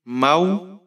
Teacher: واو ساکن ہے، واو لین ہے، نرمی سے پڑھیں گے